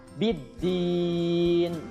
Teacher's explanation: Alif lamnya tidak dibaca, jadi langsung masuk ke huruf dal, ya. Biddin, din juga sama itu mad arid lisukun. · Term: alif lam syamsiyah